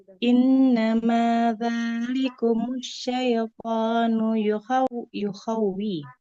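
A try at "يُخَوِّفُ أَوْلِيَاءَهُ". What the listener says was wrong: Wawunya, wawunya tidak boleh dipanjangkan ya. yukhawwi.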